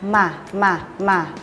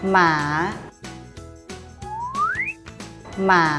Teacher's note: ให้ริมฝีปากบนและล่างปิดชิดกันทำเสียงขึ้นจมูก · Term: มอม้า